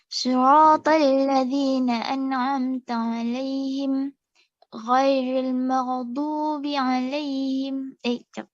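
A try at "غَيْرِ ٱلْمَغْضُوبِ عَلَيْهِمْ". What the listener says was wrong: Cuma ghain masih sama ya tadi ya. Mau tebalkannya. Ghain dia punya sifat huruf dia tebal Jadi kita tak boleh maran mau.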